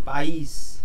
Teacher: Oxítona, país, quando a vogal tônica cai na última sílaba. País, você pronuncia o is com mais força.